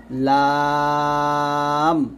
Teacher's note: জিহ্বার আগার কিনারা তার বরাবর উপরে দাঁতের মাড়ির সঙ্গে লাগিয়ে একটি উচ্চারিত হয়